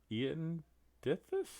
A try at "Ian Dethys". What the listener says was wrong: Ian Dethys. pronounce the I as an E, so Ian Dethys. It's part of the dialect.